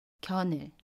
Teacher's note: 받침 니은과 모음 의가 만납니다. 그러면 받침 니은이 모음 자리로 가서 견을 이라고 발음해요. 연음입니다. 견을.